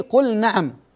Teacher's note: باظهار اللام الساكنه قبل النون في قوله قل نعم